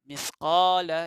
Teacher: Ya'mal mithqa ni sebutan dia ialah lidah kita dikeluarkan. Mithqala, di sini ada alif dua harakat mad asli.